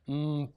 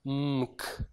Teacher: what you're doing is your tongue is moving between the m and the k · M and p are both bilabial sounds. They're made with the two lips coming together.